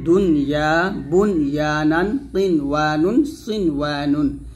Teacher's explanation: এই 4টা শব্দ কোরআন মাঝে যেখানেই পাবেন গুন্না না করে স্পষ্ট করে পড়বেন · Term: ইজহারে মুতলাকের